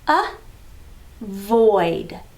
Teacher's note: when we hear the uh sound it's that lazy schwa sound